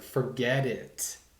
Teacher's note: we connect the consonants with the vowels you know looking at the american t and how that could sound like a d sometimes